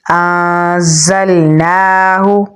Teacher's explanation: نون کے اوپر کھڑی زبر ہے تو اسے ہم لمبا پڑھیں گے۔ ہا کو ہم گلے کے نچلے حصے سے نکالیں گے تو پڑھیں گے انزلناہ۔